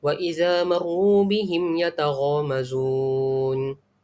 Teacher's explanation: Jadi ia akan dibaca, mim mati ini akan dibaca dengan secara jelas dan nyata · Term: izhar syafawi